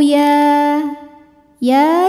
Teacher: sebab huruf ya barisnya fathah panjang maka ya kita panjangkan dua harakat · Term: mad thi'i muqadar